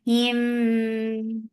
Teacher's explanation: Idgham Shafawi. Mim Sakina is merging into Mim Mutaharika.